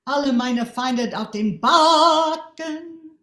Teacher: So loud on ba and soft on ken, right?